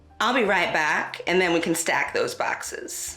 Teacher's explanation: bat retraction, or the A vowel being pronounced further back in the mouth among Bakersfield African Americans.